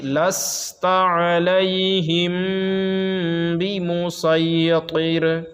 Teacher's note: علیہم، میم ساکن کے بعد با آ رہا ہے تو غنہ ہوگا